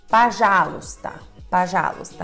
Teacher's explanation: a sílaba tônica é a sílaba já, que acontece com o primeiro O, você já sabe, se torna A.